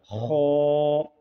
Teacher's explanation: खौ का मखरज हलक के मुँह के जानब वाला हिस्सा है